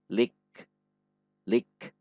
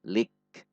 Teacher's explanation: Ada aliran udara setelah syiddah pada huruf kaf.